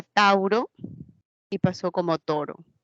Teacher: de lo que era diptongo se convierte en una sola vocal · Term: monoptongo